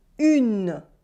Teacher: Here there is no un sound at all. It is not un, it is une.